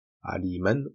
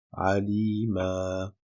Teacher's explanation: Donc effectivement, si on s'arrête sur le mot aliman, on prononcera le alif. Quand on remplace bien at-tanwin à l'arrêt par un alif qui est prononcé de deux temps. Donc au lieu de dire aliman, on dira alima.